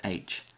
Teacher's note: here's a very breathy sound for the letter H H almost difficult to hear H again with the letter i